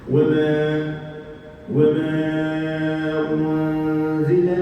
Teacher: Jadi dengung ni dia bukan suara dekat a tu aje. Dia mesti ada projection daripada hidung.